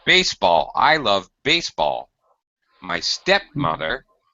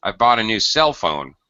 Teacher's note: we slightly exaggerated a higher pitch in the first word and the main syllable the second word has a much lower pitch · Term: compound noun stress pattern